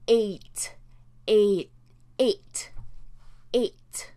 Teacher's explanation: the stress we put is on that first sound but we just have a slight hint of a second vowel sound coming through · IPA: /eɪt/